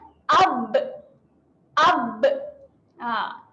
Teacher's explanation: Okay, kerana apabila kita rapatkan bibir, angin nak keluar tapi kita tahan. Kita tahan iaitu kita tutup mulut. Okay, jadi dia menghasilkan satu letupan kat mulut. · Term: melantun